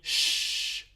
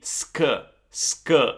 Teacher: it's not gonna be sh anymore, but it's gonna be sk, sk, like the English word skill